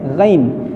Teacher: اگر آپ نئے ہیں، جو بہت حضرات ایسے ہوں گے جن کے ہا اور ہا دونوں ایک ہی جیسے نکلتے ہیں، سمجھ میں نہیں آتا، غین نکلتے ہیں تو اسے پڑھتے ہیں گین، یہ گین نہیں ہے بلکہ غین ہے، غین، جیسے آپ پانی منہ میں لے کے غرغرہ کرتے ہیں اس طریقے سے غین نکلے گا